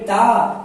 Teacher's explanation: तो टा को जब आप करते हैं तो जीभ टेढ़ी हो जाती है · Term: मूर्धा